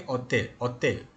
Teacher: But in some places, people make this H silent. They say hotel, hotel, like that.